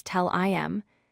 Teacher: The H sound is frequently dropped, especially in casual speech.